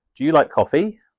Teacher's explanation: Rising intonation, used in yes or no questions.